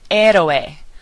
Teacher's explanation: Notice that we're not pronouncing the H.